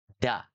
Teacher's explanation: Kalau dal yang nggak pakai titik itu, dia ujung lidahnya dengan gusi ya